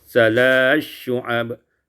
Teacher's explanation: Pada ayat yang ke-30, salasi syu'ab idghamus sa fi syin, diidghamkan sa pada syin